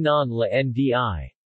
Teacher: When preceded by a syllable with a coda, the 'r' similarly moves to 'l'